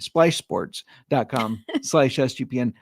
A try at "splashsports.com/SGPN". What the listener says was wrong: And I think you said Esh. GPN.